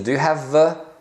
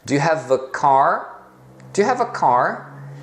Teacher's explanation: se você tá falando mais naturalmente mais rápido Então você reduz esse Ei para um A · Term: reduzido